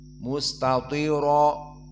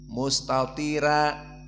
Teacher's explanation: misalnya mustatiro, maka di sini mufakhamah. Namun Wars membaca tarqiq karena sebelumnya sukun, maka dibaca mustatira. Ini dalam keadaan fathah, jelas berbeda.